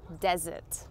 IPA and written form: dəˈzərt (desert)